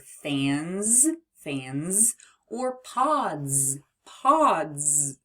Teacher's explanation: But sometimes the letter S spells Z at the end of words, such as in the word fans, fans, or pods, pods. So S spells Z if the sound right before that letter is a voiced sound. Remember, it's voiced if we can feel that buzzing in our throat. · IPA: /z/